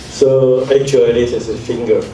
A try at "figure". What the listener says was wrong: it's not finger. Finger is this one. It's figure. It's figure. Figure.